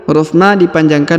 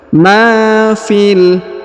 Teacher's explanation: huruf Ma dipanjangkan dua harakat karena di depannya terdapat Alif Ma fil huruf Fi langsung kita sambung masuk ke huruf lam